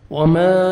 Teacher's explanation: تو ہم نے یہ میم کو کھینچنا ہے 3 سے 4 سیکنڈ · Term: مد جائز